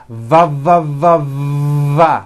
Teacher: produced by contacting your upper teeth to your lower lip it sort of feels like you're biting down on your lower